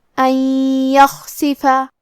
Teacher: یا حروف الادغام بغنہ میں سے ہے، لہذا ہم یہ حکم کو غنہ اور تشدید کے ساتھ ادا کریں گے